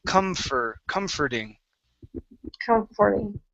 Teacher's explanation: Okay, let's go to the word comforting. Now, the OR here in the middle of this word is actually an ER sound